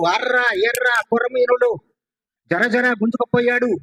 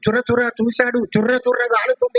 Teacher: దాని యొక్క ఉచ్చారణ పోకుండా కాకపోతే యాక్సెంట్ ఇచ్చి కాస్త యాక్సెంట్ ఇచ్చి ఎక్కువ అడిషనల్ యాక్సెంట్ ఇచ్చి అడిషనల్ కంపనములు ఇచ్చి పలుకుతున్నారు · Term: శకట రేఫాన్ని